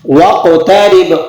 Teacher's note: قاف پہ آپ نے قلقلہ بھی کرنا ہے